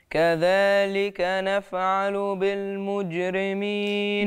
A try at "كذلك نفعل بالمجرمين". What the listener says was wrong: بالمجرمين، وطلعش الهوى من الأنف.